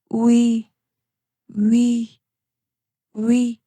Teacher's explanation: Next we is made by combining oo and e. Start with your lips rounded for oo and then move to e. We becomes we say slowly we we we.